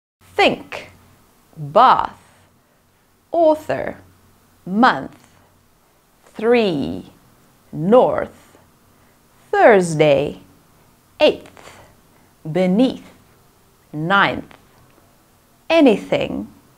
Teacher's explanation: tip of the tongue is positioned below the top front teeth the tip of the tongue grinds against the top front teeth causing friction subtle contact between the top of the front of the tongue · Th sound is unvoiced. You can create it with air only. The tongue's tip passes through the teeth to make th.